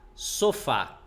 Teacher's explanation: Qual é a sílaba tônica? É a última, sofá, é a mais forte.